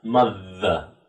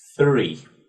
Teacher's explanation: So it's this, the difference is between the in three, okay, and in mother, okay? So you get this vibration in mother and no vibration in three